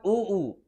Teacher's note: उ ऊ ओष्ठ का प्रयोग हो रहा है